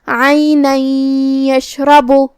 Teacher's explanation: کلمت عینن میں یہاں حرف العین ہے، ہم عین کو حلق کے درمیان والے حصے سے ادا کریں گے، آخر میں نون پہ تنوین زبر ہے، پھر حرف الیا آتا ہے کلمت یشرب میں، یہاں حکم ہے ادغام بغنہ تو ہم یہ تنوین کو یا میں ملا کے غنہ اور تشدید کے ساتھ یہ حکم کو ادا کریں گے